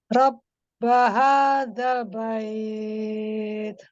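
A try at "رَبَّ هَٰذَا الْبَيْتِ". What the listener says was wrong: Jangan bait, ke i. Hadzal bait.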